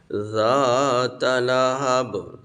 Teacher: ذا زبان کا کنارہ سامنے والے دانتوں سے لگے گا تو ذا ادا ہوتی ہے، سیٹی کی آواز نہ آئے، سیٹی والی ذا ہوتی ہے۔